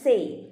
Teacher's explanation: AY എന്നുള്ളത് എയ് എന്ന ഡിഫ്തോങ് ആയി മാറുന്നു